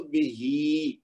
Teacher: اس کو 2 حرکت کھینچیں گے کیونکہ یہ یا مد کا بدل ہے کھڑی زیر